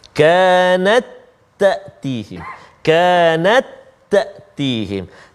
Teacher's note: Ta yang pertama tak berbaris, ta yang kedua berbaris. Jadi masukkan bunyi ta itu jadi satu-satu ta aja. Jangan baca kanat tak ada bunyi ta, tak ada. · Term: idgham